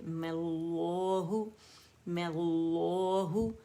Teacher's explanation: اور دونوں لام موٹے ہوں گے. کوئی ایک پہلا پتلا اور دوسرا موٹا نہیں ہوگا، یا پہلا بھاری دوسرا باریک نہیں ہوگا، دونوں لام جو ہیں مخفم ہوں گے، موٹے پڑے جائیں گے۔